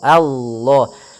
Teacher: a-nya tipis, kemudian lafal Allah-nya tebal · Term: lam tafkhim